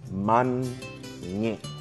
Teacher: a glottal stop a tightening of the back of the throat to cut off the sound abruptly